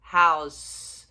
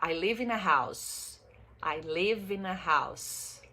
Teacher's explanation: Som de S no final, não é som de Z.